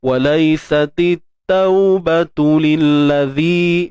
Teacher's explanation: untuk zal jangan lupa kita keluarkan sedikit hujung lidah kita